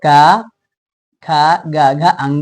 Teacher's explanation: जिस वर्णों का उच्चारण हम लोग कंठ से करते हैं उसको बोलेंगे कंठ वर्ण